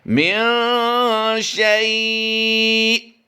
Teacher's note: ہم یہاں پر مد لین عارض کرتے ہوئے اسے حالت وقف میں کم سے کم 2 الف تک کھینچ کر پڑھیں گے